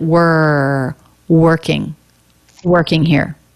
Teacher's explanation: just blends with the r who er work so no walk no jaw drop we don't need much jaw drop for this sound tip of the tongue pulls back and up a little bit